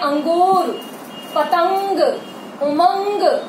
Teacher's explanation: ऐसा वर्ण है जिसको बोलते समय ध्वनि जो वायु होती है वो नाक से निकलती है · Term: अनुस्वार